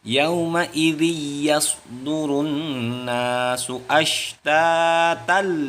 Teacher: Tanwin bertemu dengan iya ini disebut hukum bacaannya, yaitu adalah idgham. Yaitu idgham bigunnah.